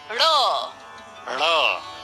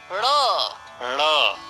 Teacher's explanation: ये द्विगुण व्यंजन है, इन्हें उत्क्षिप्त व्यंजन भी कहते हैं। इसका उच्चारण भी मूर्धा से होता है।